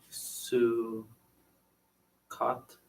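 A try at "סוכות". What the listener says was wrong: Great. Sukkot.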